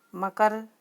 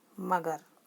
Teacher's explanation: अघोष वर्ण के स्थान पर घोष वर्ण का उच्चारण करना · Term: घोषित करण